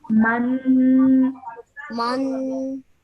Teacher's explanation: So we produce that nasal sound in our nose for 2 seconds at the end.